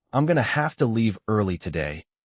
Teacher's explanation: going to and have to are reductions, so they're not stressed